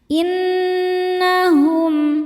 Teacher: Cara bacanya berdengung. Tahan dengungannya kurang lebih dua harakat. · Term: ghunah musyaddadah